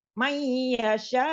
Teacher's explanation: ada idgham bigunah untuk nun sukun bertemu dengan ya, jadi dileburkan untuk ya-nya